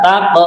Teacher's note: Nah, qafnya juga kita tunaikan qalqalahnya.